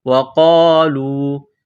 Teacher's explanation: واو کو پڑھتے وقت ہونٹوں کو گول کرنا ہے، قاف کو موٹا کرنا ہے، قاف الف زبر قا، لام واو پیش لو۔